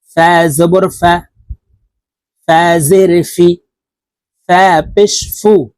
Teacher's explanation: ফা হরফ উপরের দাঁত নিচের ঠোঁটের পেটের সঙ্গে লাগিয়ে উচ্চারণ করব